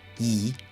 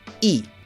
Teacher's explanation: the number two e has a low tone and the letter e e has a high tone